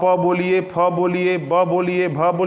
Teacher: मुंह खुला हुआ हो आपका और आप प बोलिए, फ बोलिए, ब बोलिए, भ बोलिए, संभव नहीं है। जब दोनों होंठ आपके एक दूसरे से मिलेंगे, तब जाकर आप इन वर्णों को बोलेंगे, और जब आप इन वर्णों को होंठ मिलने के बाद बोलेंगे, तो ये ओष्ठ वर्ण कहलाते हैं, ओठ के द्वारा बोले जाने वाला वर्ण।